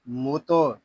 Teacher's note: میم تو پیش موتو، تو حروف مستعلیہ میں سے ہے، اس کو پر پڑھیں گے